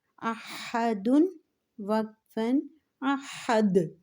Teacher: دال حروف قلقلہ ہے، جب حروف قلقلہ ساکن ہو تو ان پہ قلقلہ کیا جاتا ہے۔ وقف کی صورت میں ہم دال پر قلقلہ کریں گے۔